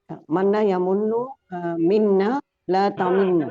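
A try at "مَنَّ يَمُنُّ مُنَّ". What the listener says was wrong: Kenapa jadi minna? Kenapa jadi minna?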